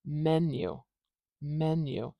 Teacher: louder it's not a lot longer because as I just said that e vowel the dress vowel it does not like being stretched longer